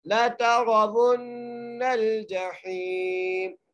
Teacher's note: واو کو نون سے سختی سے ذرا مضبوطی سے ملائیں گے اور نون کے اوپر غنہ کریں گے.